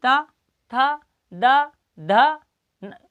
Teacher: इसके बाद क्या क्या कहा था, तो देखो ऊपर वाले दांतों को स्पर्श किया, था। द ध, यानी अपनी जीवा अंदर की साइड से ऊपर वाले दांतों को धकेल रही है, तब शब्द निकल रहा है